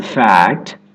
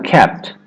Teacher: You'll hear that true T sound in clusters like CT as in fact